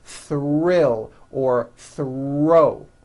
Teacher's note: the R is the strongest sound of the blend and is louder than the TH